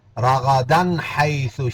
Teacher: نون تنوین کے بعد یہاں ہا آ گیا، یہاں اظہار ہوگا